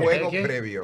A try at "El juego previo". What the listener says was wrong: Es que él tiene problemas con la G. La G. No es J.